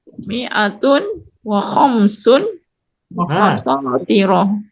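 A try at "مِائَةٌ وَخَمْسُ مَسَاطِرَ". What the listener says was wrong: Khamsu, Ibu tidak boleh tanwin, kamu Dok. masatiro. Tanwin atau tidak bertanwin. Kita tegaskan tanwin dan tidak bertanwin harus benar bacanya.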